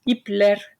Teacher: The suffix lar or ler expresses plurality, plural in Turkish, and we see that they choose an ler with a front vowel if the root of the word is also front, like here in ipler. Ip, an I, is a front vowel, so therefore the suffix vowel is not a but e, which is a front vowel, and you get ipler for ropes. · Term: vowel harmony